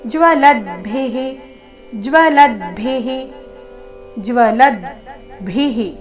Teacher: ಕೊನೆಗೆ ರಸ್ವಭಿ ಮಹಾಪ್ರಾಣ ಅದರ ನಂತರ ವಿಸರ್ಗದ ಉಚ್ಚಾರಣೆ ಹಿ ಎಂದು